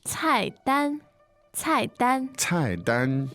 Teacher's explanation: Fourth tone and first tone.